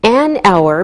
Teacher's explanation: We say an hour because we don't pronounce the H, so it sounds like a vowel sound.